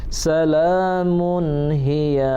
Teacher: tanwin berjumpa dengan huruf ha, itu izhar, jelas dan terang. Jangan lama-lama, jangan dengung.